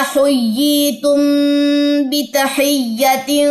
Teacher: میم ساکن کے بعد با ہے تو غنہ ہوگا